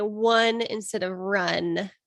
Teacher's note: gliding is essentially when r and l are replaced by w